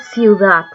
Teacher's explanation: hay dos vocales cerradas que se unen en una misma sílaba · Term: diptongos